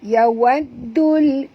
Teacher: Masukkan bunyi dal terus ke dalam lam disertai dengan jud. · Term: alif lam syamsiah